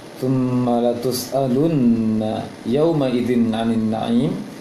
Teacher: ketika mim dan nun bertasydid, maka ditahan lama bacaannya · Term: tasydid nunnya